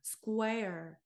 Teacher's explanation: 우 사운드 끝까지 당긴 다음 r 모음 생길 거예요.